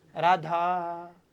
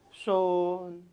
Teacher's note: जो ये पीछे हम लंबा साउंड कह रहे हैं ये आपके किस में काउंट होता है, प्लुत में।